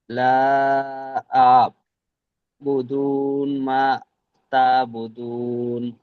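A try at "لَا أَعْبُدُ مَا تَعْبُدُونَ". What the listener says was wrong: এখানে লা আ'বুদুন বলছেন, এখানে নুন নেই। লা আ'বুদু, আ'বুদ নয়, আ'বুদু।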